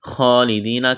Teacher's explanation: کڑا زبر ہے، خا کو موٹا کرنا ہے، یا ساکن سے پہلے زیر ہے، یا مدہ ہے، ایک الف کے برابر کھینچنا ہے، نون کو جلدی پڑھیں گے۔